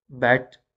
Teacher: in bet the first sound is b, which is voice sound we know